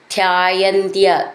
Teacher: ധ്യ എന്നുള്ള അക്ഷരം നന്നായിട്ട് ഊന്നി പറയാനുള്ളതാണ്.